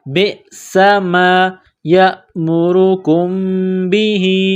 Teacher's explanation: سین میں سیٹی کی آواز پیدا کرنی ہے